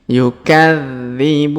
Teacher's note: Huruf dza atau dzi di sini berharokat tasdid, maka kita tahan dan kita tekan.